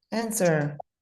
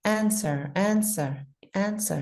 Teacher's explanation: We need to take the W out. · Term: Silent W